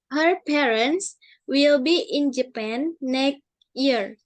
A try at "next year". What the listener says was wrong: Next year. Ada X ya. Next, bukan pakai K. Next year.